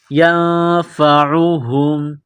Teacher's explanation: نون ساکن کے بعد فا ہے، حروف اخفا ہے تو غنہ کریں گے، آواز ناک میں چھپائیں گے